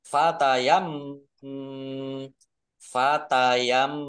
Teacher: mim tasdid dibaca gunah atau mendengung ditahan dua harakat biar tampak dengungannya